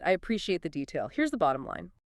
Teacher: falling down quite clearly on bottom line to signal the end